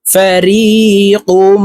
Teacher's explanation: তানভুইনের পরে ইদগামে বা গুন্নার হরফ মিম আসছে তাই এই কফ মিমের সাথে গুন্নার সহিত মিলাইয়া পড়বো